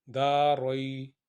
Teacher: دا کو لمبا 2 حرکت کے برابر، رئی کو نرمی کے ساتھ